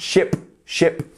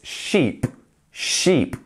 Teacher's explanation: ship is a quick sound, ship, ship, whereas sheep, we're almost pushing our cheeks outwards. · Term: long E